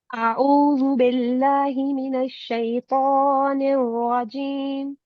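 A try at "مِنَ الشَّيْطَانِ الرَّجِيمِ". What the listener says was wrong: Still the click is missing. या जी निर्रजीम। अब आप इस क्लिक के साथ इसको हैवी साउंड भी दें। निर्रा निर्रा।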